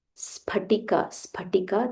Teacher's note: this is not f this is p p with a aspirational sound